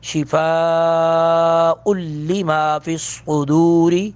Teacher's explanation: صاد کو پر کر کے پڑھیں گے، را کو پر نہیں کریں گے اس لیے کہ زیر ہے اس کے نیچے